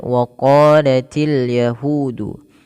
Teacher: Untuk huruf qaf, di sini kita panjangkan dua harakat · Maka apabila ada fathah bertemu alif, maka dia dinamakan dengan mad tabi'i, panjangnya dua harakat. Dan untuk huruf qaf sendiri, tebalkan dia sambil kita buka rongga mulut kita karena untuk itmamul harakat, untuk menyempurnakan daripada membunyikan fathah.